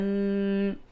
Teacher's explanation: تنوین کے بعد یعنی 2 زبر کے بعد ضاد ہے تو اس جگہ پہ اخفا کریں گے